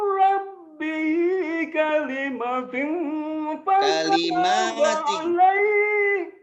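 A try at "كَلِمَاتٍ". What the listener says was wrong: Tingginya bagus ya, sampai meremelek. Tapi kalimat matinya maknya panjangin.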